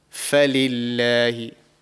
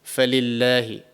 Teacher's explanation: Very, very light because there is a kasra underneath the letter before lamul jalalah.